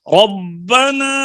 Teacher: ربنا میں مد منفصل ہے، اتنی لمبی نہیں ہوگی، مد ہوگی لیکن اتنی لمبی نہیں